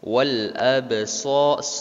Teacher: ba mati di situ dipantulkan. Termasuk dalam qalqalah sugro.